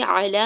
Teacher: ہا کی پیش کو میم ساکن کے ساتھ ملائیں گے. علا میں لام کے اوپر کھڑی زبر ہے, دو حرکت کھینچ کے ادا کریں گے. با کے زبر کو عین ساکن کے ساتھ ملائیں گے.